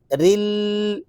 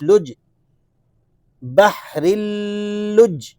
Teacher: لام مشدد ہے تو رو کو آپ لام سے ملائیں گے تو لام میں سے ایک ساؤنڈ نکلے گا، رل، ایک دفعہ مشدد حرف کی ادائیگی ہو گئی، اور دوسری دفعہ اس کو پڑھا جاتا ہے جب یہ اگلے حرف کے ساتھ جوائنٹ ہوتا ہے، ملتا ہے۔